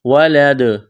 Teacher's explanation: وقف کریں گے تو دال کو ساکن کریں گے. دال پر قلقلہ کریں گے.